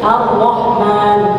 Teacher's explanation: Jadi rohnya itu getarannya dikit aja.